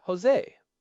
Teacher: the letter J in modern Spanish has that raspy guttural sound like in the word Jose. But in Ladino, they often preserve the old SH or Z sound.